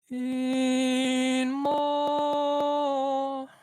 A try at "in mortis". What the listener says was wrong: No, that was a flat.